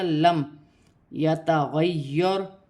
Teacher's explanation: را ساکن سے پہلے زبر ہے، را موٹی پڑھی جائے گی، مشدد حرف جماؤں کے ساتھ ادا کیا جائے گا۔